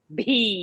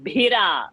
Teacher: Bhi should go with more air outside. Bhi, like that, more force. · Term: bha mahaprana